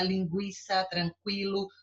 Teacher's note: a letra u é pronunciada mas ela é fraca